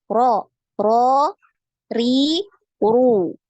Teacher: untuk getaran dari huruf ro ini hanya cukup sekali ya. Jadi sekali aja getarannya, tidak terlalu banyak ya. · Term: takrirnya